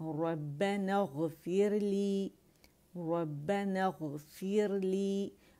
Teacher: را جو ہے ساکن، اس سے پہلے ہمارے پاس زیر آ رہی کسرہ، تو را کو باریک پڑھیں گے. فیر زبان کی جڑ نیچے ہو جائے گی.